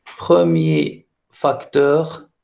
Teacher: dans premier facteur, je ne prononce pas le R